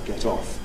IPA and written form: ˈget ˈɒf (get off)